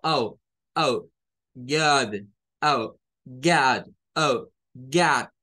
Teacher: Es esa mezcla que hay entre una A y una O. Es como que comencemos queriendo hacer una letra A, pero terminemos sacando una O. · Se parece al que vimos en Heart. Es esa mezcla que hay entre una A y una O.